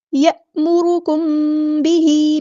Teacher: मीम साकिन के बाद बा है तो इख़फ़ा शफ़वी होगा, अलिफ के बराबर यहाँ पे रुकेंगे।